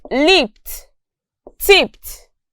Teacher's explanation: Notice that in these words, the ED is pronounced as a consonant sound T.